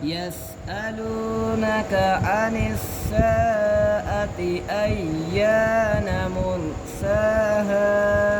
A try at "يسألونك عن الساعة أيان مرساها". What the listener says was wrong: आपने साआती को ज़्यादा लंबा किया है يسألونك عن الساعة أيان مرساها